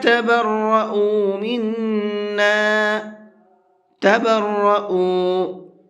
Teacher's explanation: یہاں حمزہ کو کھینچ کر کے پڑھیں گے تھوڑا سا، اس لیے کہ یہاں پر واو مدہ ہے